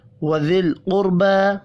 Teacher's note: قاف اور را پر بھی پڑھے جائیں گے۔ قاف حروف مستعلیہ ہے اس لیے، جبکہ را ساکن سے پچھلے حرف کے اوپر پیش ہے را کو، اس لیے پر پڑھنا ہے